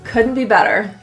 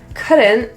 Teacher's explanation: The T in couldn't is a glottal T. That means it is kind of stopped in the throat.